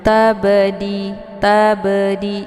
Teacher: sini ada basukun yang terdapat di pertengahan kalimat maka ba sukun ini dinamakan dengan Qolqolah Sugro karena banyak terdapat di pertengahan maka cara bacanya banyak dipantulkan secara pantulan ringan